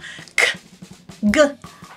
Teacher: You can feel the back of your tongue making contact on that soft part of your palate, the velum.